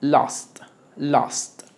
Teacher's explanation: es una o con boca a